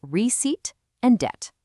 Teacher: the P in receipt and the B in debt are completely invisible when you speak. It is just receipt and debt.